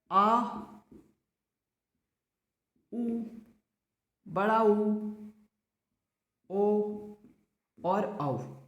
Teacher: ये ऐसे स्वर हैं जिनको बोलने के लिए जीभ के पश्च भाग का उपयोग हो रहा है, इसीलिए इनको बोला जाता है पश्च स्वर।